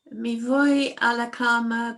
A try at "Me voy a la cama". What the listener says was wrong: Don't say me voy. Make sure that English E is a Spanish E. So it's me. Me voy a la cama.